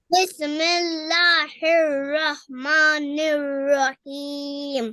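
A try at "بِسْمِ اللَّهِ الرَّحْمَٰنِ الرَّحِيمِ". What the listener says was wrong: آپ سین پہ کلکلا کرتے ہو، بس پڑھتے ہو، ایسے نہیں کرنا. کلکلا صرف قوف تو با جیم دال پہ کیا جاتا ہے جب ان پہ سکون آئے تو، اور کسی جگہ پہ کلکلا نہیں ہوتا. یہ ہے بسم اللہ الرحمن الرحیم.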